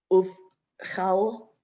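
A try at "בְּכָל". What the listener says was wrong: Careful, see that how the vowel underneath it is bigger? It's chol, uvchol,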